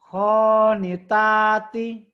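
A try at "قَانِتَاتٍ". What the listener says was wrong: Orang Jawa pasti khonitati. Di Jawa emang kok kadang-kadang ke kho. Konitati.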